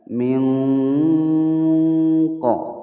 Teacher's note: Min qa, huruf nun sukun bertemu dengan huruf qaf, yang mana huruf qaf ini adalah salah satu daripada huruf ikhfa, maka cara membacanya adalah disamarkan huruf nun sukunnya, kemudian bersiap mengucapkan huruf qaf sembari didengungkan. Min qa, hukum bacaan ikhfa ab'ad.